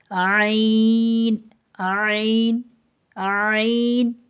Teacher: وسطی حلق سے یعنی حلق کے درمیانی حصے سے عین ادا ہوتا ہے